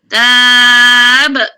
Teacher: Nipis tab tu bila berhenti jadi mak li sukun. Asalnya ta, bila nak berhenti jadi tab. Berhenti dengan nipis dan qalqalah ba tu. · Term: Qalqalah kubra